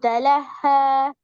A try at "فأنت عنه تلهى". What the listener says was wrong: திருப்பி தலஹன்னு தான் வருது. தலஹ இல்ல, சத்த உச்சரிக்கணும். அன்ஹு நீட்டுறது போல, தலஹ என்றதும் போல. ரெண்டு மாறணும். அதான் அதான் தலஹங்கிறது போல, அது சின்ன ஹா.